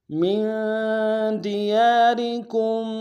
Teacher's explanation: أو اخرجوا من دياركم میم کو نون ساکن کے سامنے لانا ہے، یہاں پہ غنہ کریں گے اخفاء کے ساتھ. دیار میں یا کے ساتھ الف مدہ ایک اعتدال میں کھینچیں گے، را کو باریک ادا کریں گے، کاف کو آگے میم کے سامنے لانا ہے، ماں کے میم کے ساتھ تشدید زور دیں گے.